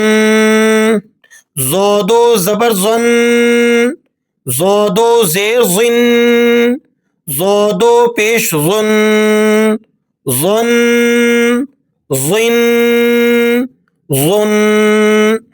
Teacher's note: اس کو آپ نے موٹا کر کے ادا کرنا ہے۔ زبان کی نوک کو سامنے والے دانتوں کی جڑ میں لگا کر اس حرف کو موٹا پڑھ کر ادا کریں گے۔